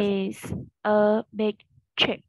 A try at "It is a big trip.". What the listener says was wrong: Yeah, chữ ơ tiếng Việt mất rồi. Đúng không? Chưa dứt khoát. Mình sẽ hạ cầm xuống hơn nhé. Mình hạ cầm xuống hơn nữa. Mở hầu miệng sẽ chưa giọng của nó.